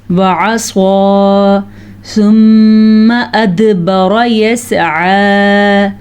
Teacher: ثم میم کا غنہ ادا کرنا ہے. ادبر دال پہ کلکلا کرنا ہے، را کو پر پڑھنا ہے، اور یسعى میں عین کا جو تلفظ ہے اس کو وضاحت کے ساتھ نکالنا ہے.